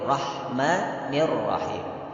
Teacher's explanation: Nah, ini kebanyakan kita ra-nya dimonyongkan, itu tidak boleh. Jadi tetap ra digetarkan satu harakat tanpa memonyongkan.